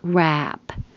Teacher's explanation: The vowel is a, as in hat. So the jaw is open, lips are back, wrap. Which is very different.